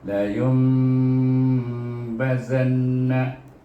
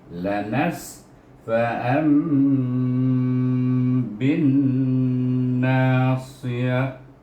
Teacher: Mim maqlubah itu iaitu ada gunah apabila kita menyebutnya, tapi dia dikekalkan gunahnya, jangan digunakan nun sakinah atau tanwin. Bukan nun sakinah atau tanwin tu yang kita nak gunahkan ataupun dengungkan, tetapi mim tu yang kita nak dengungkan.